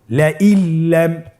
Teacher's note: নুন সাকিনকে আমাদেরকে পরবর্তী হরফের সাথে মিলিয়ে গুণা ছাড়া পড়তে হবে